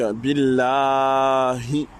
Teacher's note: C'est un ha d'essoufflement. Profond à l'intérieur de la gorge.